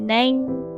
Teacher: Mati nain panjang, lepas tu bunyi n kat hujung.